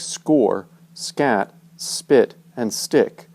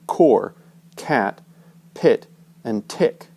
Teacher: English does have unvoiced, unaspirated consonants, but they always come after the letter S. So like score, scat, spit, and stick, as opposed to core, cat, pit, and tick.